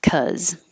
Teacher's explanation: Because. And you'll also hear people leave off the buh and just say cuz.